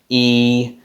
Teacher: It kind of sounds like a long closed front unrounded vowel, e, which is only ever used, a long closed front unrounded vowel is only ever used in Australian English in stressed syllables.